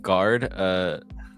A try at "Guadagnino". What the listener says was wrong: There's no R in there. There's no R in there. It's Guadagnino. Luca Guadagnino's.